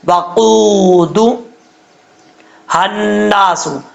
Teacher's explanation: آگے واؤ مدہ ہے، ایک الف کی مقدار لمبا کر کے پڑھیں گے